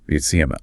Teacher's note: In unstressed pronouns like him or her, that initial H sound just vanishes. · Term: disappearing H